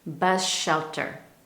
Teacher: For example, the S in the word bus blends with the in shelter bus shelter, we almost lose that clear S sound at the end of bus